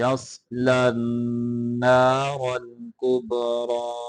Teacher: صاد کو موٹا کریں گے لام کو آگے نون کے ساتھ ملائیں گے